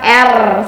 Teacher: posisikan tetap lidah anak ke atas dengan cara mencontohkan bunyinya R minta anak untuk merasakannya pada bagian leher bunyikan R seperti itu jadi di leher ada getaran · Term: fonem R